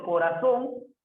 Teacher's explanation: tiene la mayor fuerza de voz en la sílaba son, última sílaba.